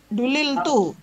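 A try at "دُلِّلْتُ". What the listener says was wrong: Jangan lupa tasdidnya pada lam yang pertama.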